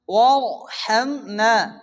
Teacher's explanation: রকে পুরো মোটা উচ্চ করে পড়তে হবে